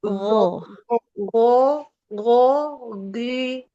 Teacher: makhraj ghain itu tidak di lidah tapi di tenggorokan tenggorokan atas